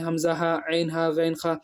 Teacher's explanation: شروع حلق سے حمزہ ہا، بیچ حلق سے عین ہا، آخر حلق سے غین خا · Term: حروف حلقی